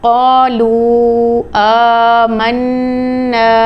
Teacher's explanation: نون مشدد کے اوپر غنہ کر کے پڑھا